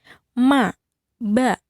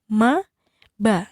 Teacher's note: ma itu sama-sama di 2 bibir, atas bawah bibir ya, menyentuh. Kemudian ba juga sama, bibir sama bibir, tapi saat diucapkan berbeda sifatnya, ma, ba.